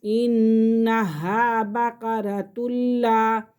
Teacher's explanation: یہاں پہ تنوین کے فوراً بعد لام آ رہا ہے یرملون میں سے، تو یہاں ہم غنہ نہیں کریں گے